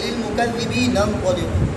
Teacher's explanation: دونوں کلمات کا حمزہ وصلیہ اگر ملا کر پڑھیں گے تو یہ حمزہ گر جائے گا